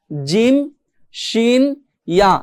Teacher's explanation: জিহ্বার মাঝখান হতে তার বরাবর উপরে তালুর সঙ্গে লাগিয়ে পড়তে হয় জিম শিন ইয়া।